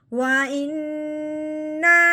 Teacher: اب ہم نے حمزہ کو نون مشدد کے ساتھ ملانا ہے اور ایک الف کے برابر لمبا غنہ کرنا ہے